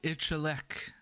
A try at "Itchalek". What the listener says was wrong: Ishale. No, you said itch. Anyhow. Ooh, it's each.